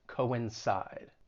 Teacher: the C-O-I-N, it's not pronounced as coin, two different syllables, coincide, to coincide with something.